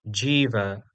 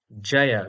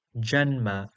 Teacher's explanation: Our next consonant is voiced but unaspirated, that is ja, ja, represented in IAST by JA.